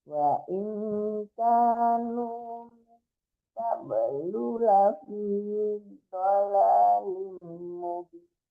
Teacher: Lu-nya nggak boleh tertahan ya Bu, karena lu-nya tidak panjang ya.